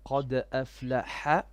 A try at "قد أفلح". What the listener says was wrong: Make your qa more heavy. قد أفلح.